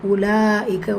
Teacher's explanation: ல இந்த இடத்துல நிறைய பேர் பண்ற தவறு என்னன்னா உலாயக்கதான். உலாக்கன்னு சொல்லிட்டு உவ வந்து நீட்டறது கூடாது. பிகாஸ் வாவுல வந்து சுக்குூன் இல்ல.